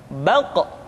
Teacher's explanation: diucapkan dengan suara yang tebal dan dalam posisi sukun maka terdengar pantulan suara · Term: huruf q